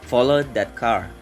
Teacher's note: English speakers help listeners notice the focus word by giving it the most emphasis. Car is the focus word in the following sentence. It must be emphasized so that the hearer can notice it easily.